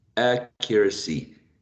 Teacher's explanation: And the first one, the stressed syllable is a trap.